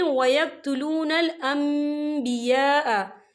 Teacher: नून साकिन के बाद जो है बा आ रहा है, तो यहाँ पर इकलाब होगा यानी तब्दीली होगी, तो हम यहाँ मीम का तलफ़ुज़ करेंगे यानी कि हम मीम को पढ़ेंगे और हम यहाँ गुन्ना भी करेंगे।